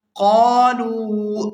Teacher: یہاں قاف کو بھی الف مدہ کی وجہ سے کھینچ کر ادا کیا جائے گا اور آگے لام کو واو مدہ کی وجہ سے کھینچ کر ادا کریں گے۔